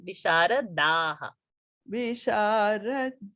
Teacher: Da alpa prana, not dhaha